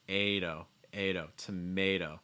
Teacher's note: That A sound followed by a fast D sound.